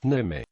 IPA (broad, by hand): nɨmɨ